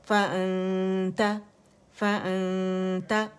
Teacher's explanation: فارتھروٹ سے ادا کرنا، اقص الحلق سے. فَأَنْتَ، آنتا کر کے نہیں ادا کرنا ہے، ٹھیک ہے، منہ نہیں کھولنا ہے